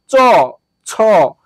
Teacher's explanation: জিহবার আগা তালু স্পর্শ করে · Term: তালব্য বর্ণ